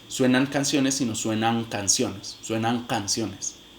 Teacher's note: se va a realizar nasal del mismo punto de articulación de la siguiente consonante. Entonces, si la siguiente consonante es velar, pues se va a realizar nasal velar también. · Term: se asimilan